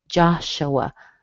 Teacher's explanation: You notice the U sounds like a schwa.